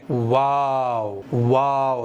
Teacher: दोनों होंठों के किनारे मिलाओ और बीच खुला रखो, इस तरह से अदा होगा वाव